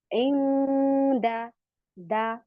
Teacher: जबान की नोक ऊपर सनाया उलिया की जड़ों में लग रही है, क्योंकि दाल का मखरज वहीं से है।